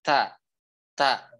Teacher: ta itu dia mengalir aliran udara, makanya ta ini termasuk yang memiliki sifat hamas.